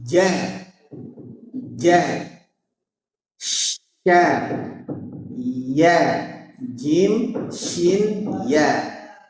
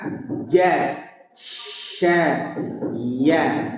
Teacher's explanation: hurufnya keluar dari tengah lidah ke langit-langit